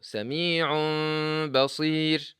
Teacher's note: If the ba is coming after the noon or the tanween, there is a unique rule for the ba itself. First, change the noon into meme, then hide this meme with the sound of غنة coming from the nose, nasalization